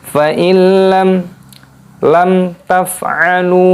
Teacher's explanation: mim sukun bertemu dengan huruf ta ini idhar syafawi, dibaca jelas tidak boleh berdengung. Lalu lunya panjang mad tabi'i dua ketukan.